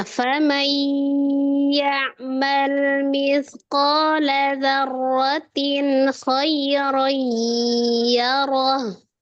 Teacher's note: Nun sukun bertemu dengan huruf ya, idgham bigunah Ustazah, didengungkan.